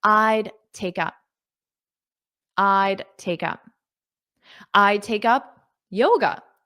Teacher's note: So notice that D is almost not pronounced when you say it in spoken English.